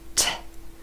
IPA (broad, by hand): t